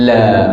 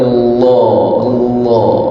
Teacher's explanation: Kalau lam tu bunyi nipis, la. Kalau lam tu bunyi tebal, bunyi Allah. Lidah naik ke atas juga Allah. Jadi fallahu ahaqqu anta.